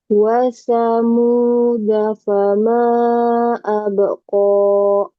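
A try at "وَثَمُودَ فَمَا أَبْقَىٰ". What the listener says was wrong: Kemudian da ini kayak kurang lepas ya. Da, da. Ujung lidah ke pangkal gigi. Wa thamuda fama abqa.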